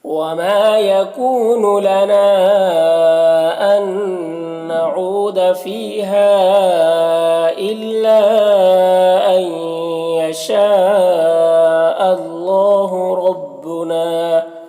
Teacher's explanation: اللہ کے لام سے پہلے حمزہ میں زبر ہے تو اللہ کے لام کو پر پڑھیں گے